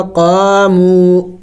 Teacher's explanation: دیکھیں واو مدہ اور الف مدہ ہے، دونوں کو لمبا کرنا ہوگا، قامو۔ وقف میں ہم نے اسی طرح پڑھنا ہوگا، قامو، اس لیے کہ جب لفظ کے آخر میں سکون آ جائے تو وہاں وقف میں اس کو اسی طرح پڑھا جاتا ہے جیسے کہ بغیر وقف میں پڑھا گیا ہے۔